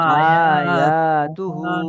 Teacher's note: হামজার উপরে খাড়া জবর হয়েছে, খাড়া জবরটি আলিফ মাদ্দার সমতুল্য, তাই একে এক আলিফ পরিমাণ টান দিয়ে পড়তে হবে। ইয়ার উপরে আলিফ জবর এসছে, আলিফ, আলিফের ডান দিকে জবর এসছে, তাই আলিফ মাদ্দা, আলিফ মাদ্দাকে এক আলিফ পরিমাণ টান দিয়ে পড়তে হবে।